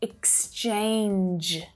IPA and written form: ɪksˈt∫eɪndʒ (EXCHANGE)